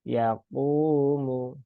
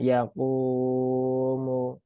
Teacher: Setelah dhammah, maka qafnya dibaca 2 harokat ya. Panjangnya cukup 2 harokat. Jangan sampai melebihi 2 harokat.